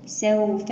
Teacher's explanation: الواو هنا لينة لأنها ساكنة وقبلها مفتوح